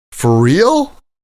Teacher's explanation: So the sound is for real? with the stress on real.